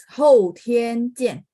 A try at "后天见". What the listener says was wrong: Nah, 天 pakai th ya.